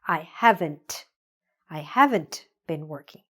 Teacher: make sure that you're pronouncing that T at the end, because if you don't, then it will sound like the positive version a little bit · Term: T sound